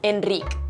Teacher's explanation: en el catalán occidental se mantienen más o menos como las e en castellano